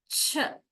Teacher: we completely block the Air Stream